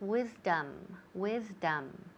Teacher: Now the second vowel, that O, it sounds more like an A almost.